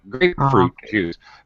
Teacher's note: we go high and then low on fruit we have to go up again with juice